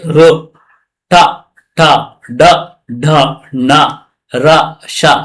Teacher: ಇವು ಮೂರ್ಧನ್ಯ ನಾಲಿಗೆಯ ಮೇಲ್ಭಾಗದಲ್ಲಿ ಹುಟ್ಟುತ್ತೆ